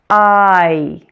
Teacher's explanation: This is a blend of the ah and E sounds. So this one is a true official diphthong, or a blend of two vowel sounds. I. Like all vowels, it's tense. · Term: long I